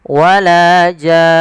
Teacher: panjangkan dulu jannya 6 harokat, kemudian masukkan nun dan ditahan baru dimatikan nunnya. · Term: mad lazim kalimi musaqqal